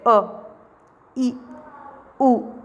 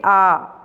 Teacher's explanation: जब हमने अ बोला तो कम समय लगा। आ बोला तो थोड़ा ज्यादा। यानी ह्रस्व से दुगना समय हमें दीर्घ स्वर में लगता है। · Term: ह्रस्व स्वर